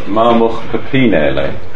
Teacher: And in this case, we have a vowel, and the A and the I contract to E